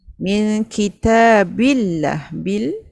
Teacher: Okay, daripada min kita tu min kitabillah bil Lam lafaz jalalah dibaca tarkik